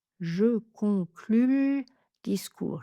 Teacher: J'aime bien noter en fait la consonne de la syllabe où le e est réduit. Je l'accroche à la syllabe précédente. Quand je le note en phonétique, ça permet de ça donne une indication de rythme.